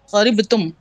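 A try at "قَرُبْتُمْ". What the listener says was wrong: फिर करीब तुम, मैं बोल रहा हूँ रा के ऊपर पेश।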